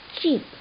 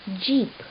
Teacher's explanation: it combines a brief stopping of the air streams with an obstructed release which causes some friction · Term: affricates